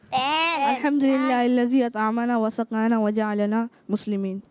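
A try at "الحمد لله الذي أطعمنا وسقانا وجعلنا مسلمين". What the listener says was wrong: الحمدللہ الذی اطعمنا. اور دال کو زا نہیں ہونا چاہیے، تو کوشش کریں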